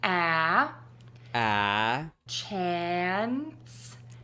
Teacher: End with that Ns by touching the tip of your tongue to the back of your top front teeth and then sliding it back and keeping that air moving for the s sound.